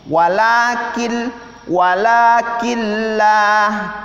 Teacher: nah tidak dengung tapi cuman dimasukkan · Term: idgham bilagunnah